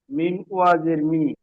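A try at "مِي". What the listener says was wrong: মিম ইয়াজের মি পড়লেন কেন? টান দেন, একালিফ পরিমাণ টান হবে তো মিম ইয়াজের।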